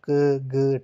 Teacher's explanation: फेफड़ों से बाहर निकलने वाली वायु जो है वो कम है। उसकी जो मात्रा है क्वांटिटी जो है वो कम है। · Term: अल्पप्राण